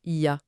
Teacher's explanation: l'incontournable « il y a », qui fond littéralement pour devenir un simple son un peu guttural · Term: économie de langage